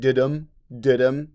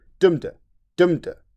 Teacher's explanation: There is a mixture of iambic, unstressed, stressed, and trochaic, stressed, unstressed meter. So Shakespeare, iambic, dudum, dudum, but trochaic, dumda, dumda.